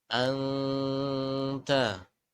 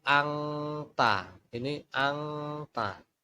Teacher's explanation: Jadi untuk ikhfa bacaannya tidak masuk kepada bacaan huruf ng ya.